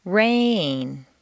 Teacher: make rain very Musical and put it on two notes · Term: new information